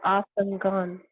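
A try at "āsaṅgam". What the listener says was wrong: Here we'll have a long A. Asanga.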